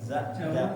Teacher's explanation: Daerah Sunda biasanya za menjadi ja